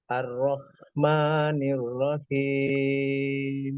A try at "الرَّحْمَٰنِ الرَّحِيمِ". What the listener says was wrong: Ro tasydidnya kurang seimbang. Yang satu sudah betul. Yang pertama terlalu kecepatan. Ar-Rahmanir Rahim.